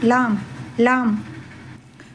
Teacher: பற்களையும் சேர்க்க வேண்டாம். நாக்கினுடைய நுனிப்பகுதிதான் முன் மேற்பற்களின் ஈரை சற்று பின்னால் தொட வேண்டும்.